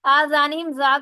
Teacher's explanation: زال کو باریک ادا کریں گے. یہاں پر پھر میم کے اوپر شد آ گئی، میم کو مشدد ادا کریں گے، یعنی غنہ کریں گے.